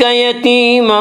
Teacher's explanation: علم یجدک یتیما فآویٰ، یتیمن، یا مدہ وہ یا جو ساکن ہو اور اس سے پہلے زیر ہو، یا مدہ کو ایک الف کے برابر کھینچ کر پڑھیں گے